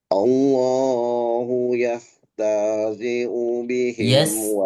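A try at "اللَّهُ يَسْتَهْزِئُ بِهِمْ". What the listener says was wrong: Yastahzi'u kebalik. Yastahzi'u. Bukan. Yang satu huruf sin.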